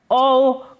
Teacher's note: औ कंठोष्ठ ध्वनि का उदाहरण है